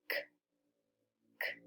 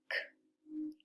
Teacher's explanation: It's just like a little puff of air with our mouth open. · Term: K sound